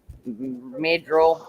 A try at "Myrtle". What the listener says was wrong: Myrtle. R is silent. You don't, the R is silent. Yeah, don't think of the R even being there. Myrtle.